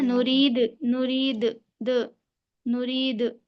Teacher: इनके मखरज टक्कर खाकर अलग हो जाते हैं जिसकी वजह से दोहरी आवाज आती है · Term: कलकला